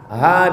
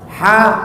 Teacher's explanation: Apa beda ha dengan ha? Ha dipegang dada bergetar. Ha dipegang dada tak ada getarnya.